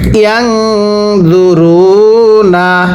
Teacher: নুন সাকিনের পরে এরকম জ ইকফার হরফ থাকলে নুন সাকিন গুন্নাহ করে পড়তে হবে